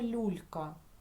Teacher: ми бачимо букву ю але чуємо тільки звук у тому що буква ю стоїть після приголосного А тепер Давайте розглянемо